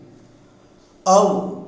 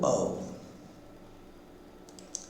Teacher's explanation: the center of the tongue raises to 1/4 of the height and produces the vowel A. Then the back of the tongue raises to 3/4 of the height and produces the vowel O. And then A moves towards U, and both A and U combine themselves, forming the diphthong au.